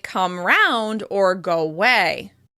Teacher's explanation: you may hear that they drop the schwa sound at the beginning of the second word. The phrases might sound like come 'round or go 'way.